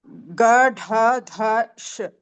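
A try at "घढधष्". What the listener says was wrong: Gha. Gha also Mahaprana.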